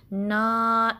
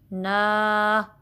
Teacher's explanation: ध्यान रहे कि जो अलिफ मद्दा की साउंड है वो नाक में ज़्यादा ना जाए। ठीक है, ना ऐसे नहीं बल्कि प्रेशर बाहर को होगा ना।